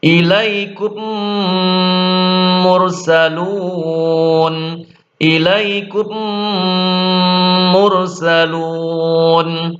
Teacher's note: Selanjutnya idgham misli atau idgham mimi. Yaitu ketika mim sukun bertemu huruf mim dibaca dengung yang lama